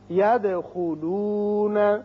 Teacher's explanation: دال ساکن ہے جو کہ حروف قلقلہ میں سے ہے، اس کی صفت قلقلہ ادا کریں گے